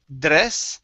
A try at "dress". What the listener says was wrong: use a j sound instead of a d sound jur dress